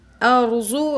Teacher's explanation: ارضو رو کو موٹا پڑھیں گے کیونکہ رو ساکن اس سے پہلے زبر ہے تو اس رو کو موٹا پڑھیں گے